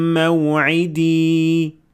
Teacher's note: So here I extended the ya for 2 harakat, even though it came at the end of the word and you stopped at it.